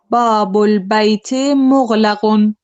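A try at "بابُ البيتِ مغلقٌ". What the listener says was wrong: So are you saying babul bayti mughlaqun? Okay, for me, for some reason, it sounds like babul baytin, but you're not saying that, no?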